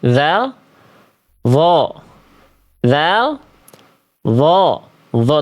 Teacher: Tebal pangkal lidah naik.